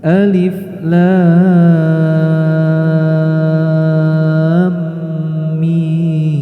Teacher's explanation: huruf alif dibaca 1 harokat, kemudian lam dibaca 6 harokat, dan ketika memasuki huruf mim disertai dengan tasdid maka harus ada gunnah